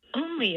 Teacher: for only you should hear that f-zero peak on the first syllable